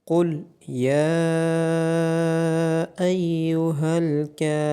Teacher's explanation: قوف اور را کو موٹا پڑھا جائے گا، یا کے اوپر مد اور کھڑی زبر ہونے کی وجہ سے اس کو لمبا کیا جائے گا۔ · کاف کے اوپر کھڑی زبر ہے اور را کے بعد واو مدہ ہے، کاف اور را کو لمبا کیا جائے گا۔